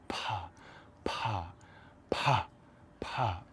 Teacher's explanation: It's like if you combined a P sound with an H sound at the same time. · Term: very aspirated P